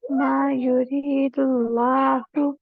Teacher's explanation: لام اسم جلالہ پور کیجیے، فل موٹا ہیوی کیجیے